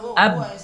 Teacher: bibir atas dan bibir bawah itu saling nyatu